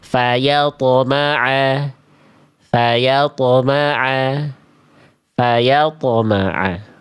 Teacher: Karena dia tidak dia memantul tebal pantulannya tidak tertahan